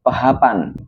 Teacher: orang mendengarnya itu P ada H-nya. Jadi ada hembusan udara di awal kalimatnya. Walaupun sama-sama menggunakan fonem P, tapi dalam pengucapannya itu berbeda. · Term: alofon